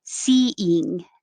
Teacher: your tongue is towards the front and very high when you say E as in eat.